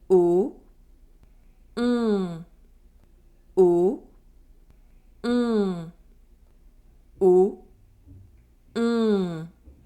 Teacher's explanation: The lips are rounded and the mouth opening is small. Don't hesitate to exaggerate the position of your lips. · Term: Nasal vowel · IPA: [ɔ̃]